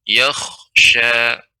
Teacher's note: dibaca dengan tebal isti'la karena kha termasuk huruf isti'la. Maka dibaca dengan yakhsha.